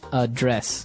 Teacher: the verb address has the the stress on the second syllable